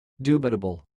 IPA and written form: 'djuː.bɪ.tə.bəl (dubitable)